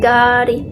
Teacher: Ada juga huruf D, dimana accent huruf D di India itu kadang mereka jadi kayak R. Kayak misalkan waktu itu aku sempat belajar bahasa Hindinya mobil itu gari, jadi G-A-D-I, tapi dibacanya tuh gari, kayak ada R-nya gitu kan, gari.